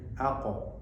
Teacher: Pantulan qaf kalau qalqalah arahnya ke fathah. Jadi aqo, bukan akad, bukan aku, tapi aqo.